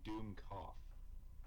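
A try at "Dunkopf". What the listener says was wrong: It's Dunk. It's Dunk. It's Dunk, not Doom. Dunk. It's Dunk off. Not Doom off, it's Dunk off. Like you dunk someone on the head. Yeah, it's Dunk off.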